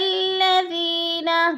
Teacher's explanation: یا مدہ کو ہم نے ایک الف دو حرکات کے برابر کھینچ کر پڑھنا ہے